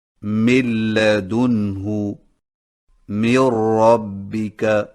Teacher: سامعین کرام، جب نون ساکن یا نون تنوین کے بعد لام یا را آ جائے تو ادائیگی کا طریقہ یہ ہے کہ نون کو اگلے حرف میں ملا کر دونوں کو ایک ساتھ مشدد پڑھ کر نون کی آواز کو ختم کر دیں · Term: ادغام بلا غنہ